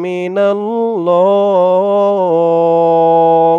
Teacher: ল এক আলিফ টানটা তিন আলিফ টান হয়ে গেছে ল বলে বলে তিন আলিফ টান দিয়ে এই হা কে ধরতে